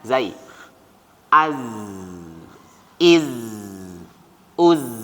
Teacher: Rokhawah, suaranya masih ngalir